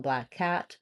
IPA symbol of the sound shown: æ